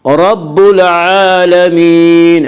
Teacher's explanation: عین کے اوپر کھڑا زبر ہے، کھڑا زبر کو 1 الف کے برابر کھینچ کر پڑھیں گے